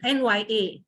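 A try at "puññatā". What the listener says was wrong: NYA is incorrect. It's Sanskrit. So you have to say punyata.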